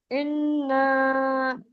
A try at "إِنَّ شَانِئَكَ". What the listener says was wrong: खींच रही हैं आप। अभी तक खींच रही है इन शानी आका।